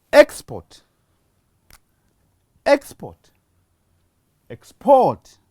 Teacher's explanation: I have emphasized the first syllable, and as you heard it being spoken louder · the stress has shifted from the first position to the second position. When a stress shifts in some of the words, it makes that word change from one word class to another word class, and especially from noun to verbs.